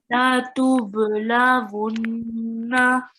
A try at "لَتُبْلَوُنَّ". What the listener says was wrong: ہاں جی پہلے لام تھوڑا سا لمبا کر دیا.